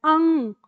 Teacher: पर आपको फोकस करना है अंग नहीं है ग नहीं है अंग नाक में ही रह जाता है